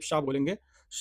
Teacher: जीभ जो है थोड़ी सी पीछे पीछे की ओर मुड़ती है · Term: मूर्धन्य